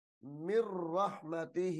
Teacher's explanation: نون ساکن کو چھوڑ دیا جائے گا، نون کو را مشدد کے ساتھ ملا کر پڑھا جائے گا